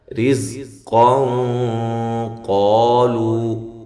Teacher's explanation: رزق یہ جو نون تنوین کا ادغام ہے بلا غنہ ہے، رزقا قالو جب ملا کے پڑھیں گے تو یہ نون تنوین کا اخفا ہوگا لیکن موٹا اخفا ہوگا